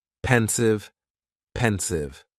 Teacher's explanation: the pronunciation is very easy, just 2 syllables, and the stress is on that first syllable